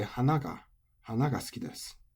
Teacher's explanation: Hana for flower is final high, so any particles attach low. So low, high, any particles attach low.